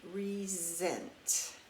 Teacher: When we say the word resent, we hear the S in that word sounding like a Z